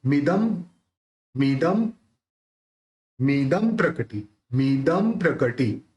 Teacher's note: प बोलते हैं तो दोनों होठ मिल जाते हैं, तो इस बिंदी का उच्चारण म निकलेगा। लेकिन वापस ये संयुक्तक से भी है प्र, तो यहाँ पे आधा प द के साथ जोड़ के बोलना है।